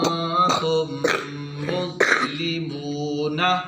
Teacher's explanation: یہ نون ساکن کا قاعدہ، نون ساکن کے بعد تا آ رہا ہے تو ادھر اخفاء کریں گے، ادھر ادغام شفوی کریں گے